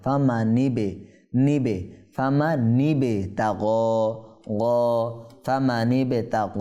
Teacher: নিয়ম কারণ কি আছে আমরা লক্ষ্য করি ফামানিবে তাগ বার মধ্যে হরফে কলকলায় সাকিন হয়েছে সেহেতু এটা কি কলকলা কম্পন সৃষ্টি হবে এখানে প্রতিধ্বনি হবে